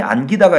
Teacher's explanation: 피동과 사동을 만드는 전미사 기는 된 소리로 발음하지 않는다고 했어요. 어쨌든 이 기도 기역, 예사소리로 시작하는 거잖아요.